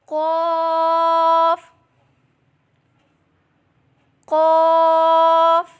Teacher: غین فا فا اوپر کے دانتوں کے کنارے اور نچلے ہونٹ کے تر حصے سے ادا کریں. فا قاف قاف زبان کی جڑ اور تالو کے نرم حصے سے ادا کریں